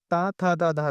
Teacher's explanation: ता, था, दा, धा ना बोलने पर आपका जीभ दांत को टच करती है, इसलिए इन व्यंजनों को दंत व्यंजन कहते हैं